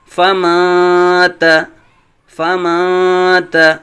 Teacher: فمن تا نہیں پڑھیں گے بلکہ اب یہاں غنہ کریں گے، اخفاء کریں گے